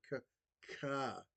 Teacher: So, like the C is like the the actual um moment of the letter C is at the back of the throat and then ca that's like an they call it an aspiration. So, you're like putting a breath into it.